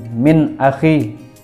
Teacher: nun mati bertemu dengan alif, maka dibaca jelas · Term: izhar